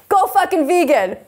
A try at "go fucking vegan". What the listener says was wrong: Oh, that sounded like go fuck a vegan.